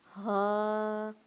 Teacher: یہ ہائے دو آنکھوں والی ہے، اس کو گرم سانس پھینک کر ہم اس کی آواز نکالیں گے